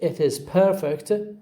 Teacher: the word perfect receives the stress on the first syllable